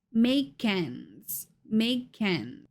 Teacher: because ends starts with a vowel sound we're going to blend it with the previous word make